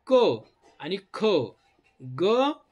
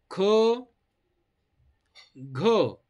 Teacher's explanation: हे महाप्राण का आहेत कारण याच्यामध्ये ह आहे ह म्हणजेच इंग्रजी मधला एच आहे